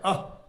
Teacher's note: विसर्ग का उच्चारण ह जैसा होता है, अह, तो विसर्ग का उच्चारण भी कंठ से होता है।